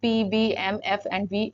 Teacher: labial sound where the lips either close और come close together during the articulation